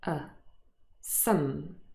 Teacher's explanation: However, usually this word is not stressed and it occurs in its weak form with the schwa.